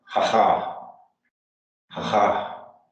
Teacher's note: the second syllable has the emphasis